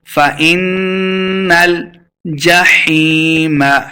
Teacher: حیم یا مد ہے، 2 حرکات لمبا کرنا ہے